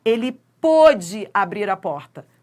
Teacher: O timbre é fechado e a sílaba é tônica. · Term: timbre fechado